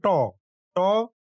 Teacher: ট উচ্চারণ করতে গিয়ে জিহ্বা উল্টে যাচ্ছে এবং তালুর শক্ত অংশে ধাক্কা খাচ্ছে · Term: মূর্ধন্য ধ্বনি